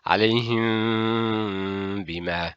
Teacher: Do not pronounce a clear meme. Do not press lips tightly. No, it's slightly.